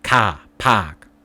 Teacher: if there's an AR sound, it's not R but ah, almost it's not AR but almost AH, ka, park, and it has a higher thing.